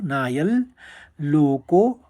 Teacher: अनुस्वार लेते ल का क्योंकि आगे वाला शब्द ल है तो नायल कहेंगे हम उसको नायल लोको अवग्रह है तो लोकोस्त